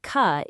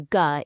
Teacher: In kite, that ka is voiceless. But in go, the ga is voiced. You turn on the vibration.